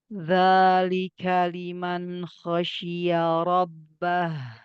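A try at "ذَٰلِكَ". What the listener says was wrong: Za tipiskan lagi. Zalika liman khosyiya rabbah.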